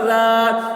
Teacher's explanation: حاسدن ای، ذال الف زبر ذا، الف سے پہلے زبر ہے، الف مدہ ہوا، اس لیے الف مدہ کو ایک الف کے برابر کھینچ کر پڑھیں گے